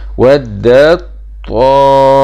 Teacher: إدغام التاء في الطاء، يعني بتدخل على التاء وتخرج بالطاء